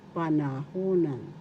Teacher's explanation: First syllable pa, second syllable na, third syllable who, fourth syllable nan. The accent in the third syllable is where it is panahunan.